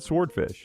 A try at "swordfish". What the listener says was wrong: W is silent. It's no W. It's silent.